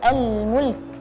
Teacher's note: Jadi lamnya terdengar, kafnya pun terdengar suaranya